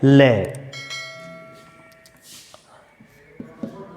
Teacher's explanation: पार्श्विक में क्या होता है कि जीवा जब दंत को स्पर्श करती है तो वायु अगल बगल से बाहर निकल जाती है, पास से बाहर निकल जाती है, वो है ले।